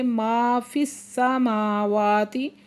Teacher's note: میم کے اوپر کھڑا زبر ہے، واو کے اوپر بھی کھڑا زبر ہے، دونوں کو دو دو حرکت کھینچ کے پڑھیں گے